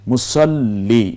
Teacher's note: চলে যাব, সল, মুসল, লকে আবার রস্যিকার লি, মুসল্লি, এর মানে তাসদিদযুক্ত লামটি 2 বার উচ্চারিত হলো